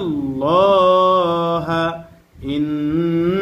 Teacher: আল্লাহর সাথে লামের পূর্বে জবর অথবা পেশ আসলে আল্লাহর সাথে লামকে পুর করে পড়তে হয়, অর্থাৎ মোটা করে পড়তে হয়।